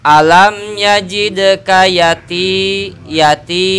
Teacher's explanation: ya mati setelah harkat kasroh dibaca 2 harokat hukumnya mad asli